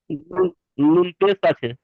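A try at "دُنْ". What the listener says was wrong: পেশ না, ওটা সাকিন, নুনের উপর সাকিন রয়েছে। সাকিনুল অক্ষরকে কেমন ভাবে পড়তে হয়? তাহলে দালের সঙ্গে মিলিয়ে পড়েন।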